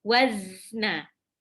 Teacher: Ada suara tambahan yang keluar dengan kuat di antara ujung lidah dan gigi seri. Makanya waktu mengucapkan zai, itu misalkan pas waktu sukun bunyinya jadi kayak wazna. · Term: sofir